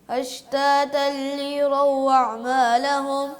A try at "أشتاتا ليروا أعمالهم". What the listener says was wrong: ٹھہر ٹھہر کے جلدی نہیں کرنا.